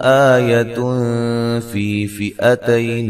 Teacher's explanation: آ مد اصلی ہے. یتن نون تنوین کا اخفا باریک